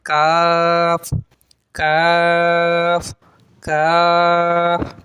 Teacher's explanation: होनी चाहिए क ठीक है और जो नीचे वाला काफ है ये जबान की जड़ और तालू के सख्त हिस्से से अदा होता है लिखा हुआ है तो यानी इसे आपने बारीक करके पढ़ना है